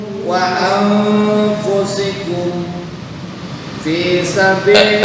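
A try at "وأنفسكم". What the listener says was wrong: Sebentar, wa anfusikum condong ke dengunya belum masuk. Infiru wa anfusikum. Nah, itu ikhfa ausat. Artinya samar dan dengung dibaca secara seimbang 50% 50%.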